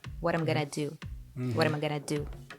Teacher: T in what becomes the flap T